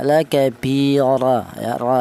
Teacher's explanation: Tafhim itu artinya tebal, di mana untuk menebalkan huruf ra yang berharokat fathah ini menggunakan lidah bagian belakang diangkat ke atas